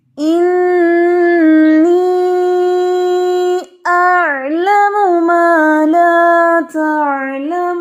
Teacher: انی مد ہو رہی ہے نا، تو آپ 2 الف جتنا لمبا کریں گے